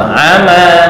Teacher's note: Kepanjangan amanya hanya 2 harakat. Ama titik. Bukan ama, itu kepanjangan masih.